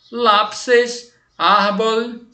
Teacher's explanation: a sílaba mais forte é a segunda de trás para frente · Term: acentuação grave